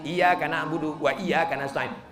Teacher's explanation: Iyanya panjang. Iya pakai tasydid, bukan iyaka.